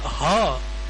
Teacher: उस ह का उच्चारण बिना ही वावेल के हो सकता है, बिना ही स्वर के हो सकता है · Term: एस्पिरेट